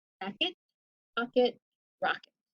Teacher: There's one other very common schwa, and it is the schwa that comes at the end of jacket, pocket, rocket.